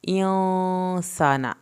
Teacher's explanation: यहाँ पे गुन्ना होगा, यहाँ पर अलिफ को खींच के पढ़ें, नून की ज़बर को लंबा नहीं करना